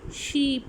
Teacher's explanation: तो टंग क्या होती है, फॉरवर्ड आती है, फ्रंट की तरफ आती है